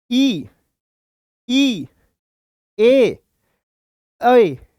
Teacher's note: जीभ के अगले वाले भाग से बोले जाएंगे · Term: अग्र स्वर